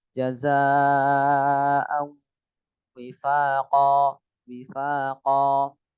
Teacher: Jaza panjang, wajib panjang 5